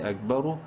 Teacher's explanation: حمزہ کا زبر اک، با زبر با، اکبر را پیش رو، را کو منہ بھر کے پڑھیں گے پیش کی وجہ سے